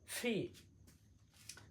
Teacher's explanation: একটু বাতাস দিব। তাহলে ফি